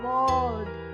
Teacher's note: w o r l d, it becomes world when we pronounce it. R is silent in British accent. Uh r is silent, that is it is a non-rhotic sound.